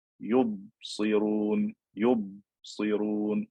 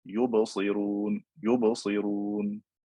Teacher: If I say, for example, yubsirun, yubsirun, I close my lips and I don't open them quickly, I don't get that qalqala. If I open my lips quickly, I get qalqala.